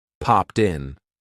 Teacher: a lot of times we're going to connect that T to the vowel sound